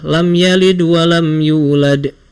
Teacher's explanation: cara bacanya itu lebih sedikit aja, nggak usah dibaca lebih tekan dibandingkan qalqalah kubro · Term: sugro